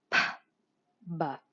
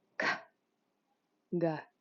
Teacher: Some of these sounds have very similar pairs, so let's compare. The unvoiced p and the voiced b.